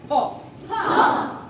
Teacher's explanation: মুখের ভেতর থেকে হঠাৎ করে বাতাস বের হবে ফ্যা ধাক্কা দিয়ে ফ্যা হাত দাও বলো ফোন মুখের বাতাস হাতে